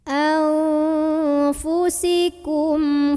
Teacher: syafawi karena ada mim sukun yang ketemu sama Heru Va maka cara membunyikan mim sukun nya ini bunyi am jelas dan tidak ditahan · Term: izhar syafawi